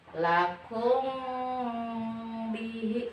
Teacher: masukkan ke hidung dan mulutnya ditutup, tapi tidak ditekan. Ditutup doang, tidak ditekan. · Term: ikhfa syafawi